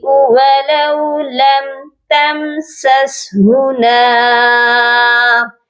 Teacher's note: ان دونوں میم پر اظہار شفوی ہوگا، صرف میم کو ظاہر کرنا ہے، غنہ نہیں کرنا ادھر